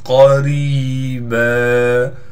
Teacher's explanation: اِنَّا أَنذَرْنَاكُمْ عَذَابًا قَرِيبًا، قاف کو موٹا کر کے پڑھیں گے، را کو باریک پڑھنا ہے، اس لیے کہ را کے نیچے زیر ہے، را کے بعد حروف مدہ میں سے یا آ گئی، لہٰذا را کو ایک الف کی مقدار کھینچیں گے